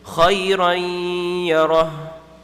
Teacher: Khayran yarah is doing the idgham, but now it has to have ghunnah though. That's why you have to stretch it.